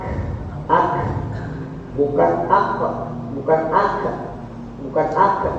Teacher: bukan kol-kolan, tapi nafasnya keluar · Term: huruf hamas